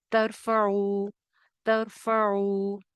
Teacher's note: را موٹی ہو جائے گی کیونکہ تا کے اوپر زبر ہے۔ ترفعو، ترفعو، عین میجورٹی کا خراب ہے، عین کے لیے نرمی کے ساتھ زبان کو پیچھے حلق میں بھیجنا ہے، درمیان حلق سے نکلتا ہے، حروف حلقی میں سے ہے، درمیان حلق اس کا مخرج ہے، زبان کو نرمی کے ساتھ پیچھے پش کرنا ہے۔